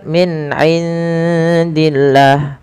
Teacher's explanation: pada lafal nun sukun bertemu ain, jelaskan huruf nunnya karena dia ada bacaan izhar